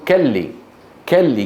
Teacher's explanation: مثل بعض مناطق فلسطين يبدلون القاف كافا